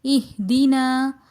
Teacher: نون مفتوح کے بعد الف مدہ آ رہا ہے، لہٰذا اس کو ایک الف کی مقدار کھینچ کر پڑھیں گے